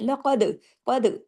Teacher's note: काफ को हैवी भी करना है, दाल पे कलकला भी करना है।